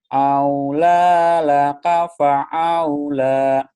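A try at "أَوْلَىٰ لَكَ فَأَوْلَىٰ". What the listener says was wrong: Biasa aja. Pa'au jangan, biasa aja. Au gelap. Aula laka fa'aula. Au-nya biasa aja. Jangan au biasa aja. Au gelap. Au. Au. Aula. Jangan aula.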